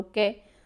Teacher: कै का आपको पता है कि कै कंठ से बोला जाता है।